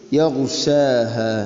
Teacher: ഗൈന് അതിൻ്റെ ഉച്ചാരണ മഖ്റജ് മാറിപ്പോകരുത്. തൊണ്ടയുടെ ഏറ്റവും മുകൾ ഭാഗമാണ് അതിൻ്റെ മഖ്റജ്.